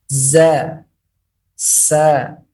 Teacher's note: Kemudian bagian yang berikutnya adalah huruf-huruf safir, yaitu suara burung dengan cara lidah masuk ke dalam dan gigi dalam keadaan merapat.